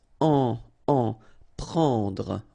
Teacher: It's what we call nasal, so it goes in your nose and it's en.